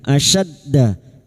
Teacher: Asyadda huruf syin wastul lisan atau tengah lidah. Asyadda. Asyadda masuk pada huruf dal yang bertasdid.